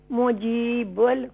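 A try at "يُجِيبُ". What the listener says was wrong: मुजीब नहीं है, या है, युजीबुल। ये देख रही हैं अम्मा जी, या के या है, या मीम नहीं है।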